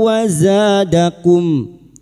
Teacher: masuk dengan mendengung masuk pada huruf wau dan mendengung selama tiga harakat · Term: idgam bhunah, idgham bi gunnah